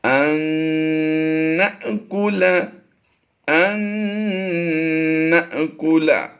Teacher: ہم نے میم کی آواز میں اور نون کی آواز میں بالکل ناک سے آواز نکالی ہے۔ ان نأکل، ان نأکل، اب یہاں پر دیکھیں ناک سے لوٹتی ہوئی آواز محسوس ہوگی۔ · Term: غنہ